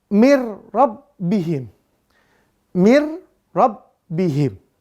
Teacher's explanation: maka bunyi nun sukunnya diidghamkan, dilebur kepada huruf ro. Bila gunnah tanpa dengung. Maka dibaca mir rabbihim.